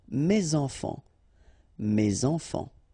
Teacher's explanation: So in that case, my children, so it should be at the plural because this children is at the plural, okay, so it goes like that, and then ending with s. Enfant, children is starting with a vowel, so you should make the liaison, mes enfants, mes enfants.